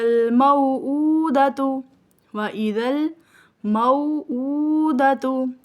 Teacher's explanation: حمزہ کو بقدر ایک الف کھینچ کر ادا کیا جائے گا